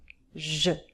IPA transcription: ʒ